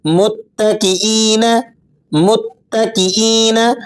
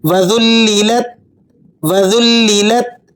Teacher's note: تا کو آپ نے باریک پڑھنا ہے اور ہلانا نہیں ہے